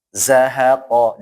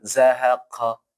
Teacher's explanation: Nah, qafnya ya, terus ingat tanpa ada anginnya. Zahaqo, jangan zahaqa.